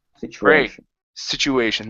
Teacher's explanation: so we have an S at the beginning okay a CH the T Tu changes to a CH and then an shn at the end so a lot of different sounds here so it's situ situation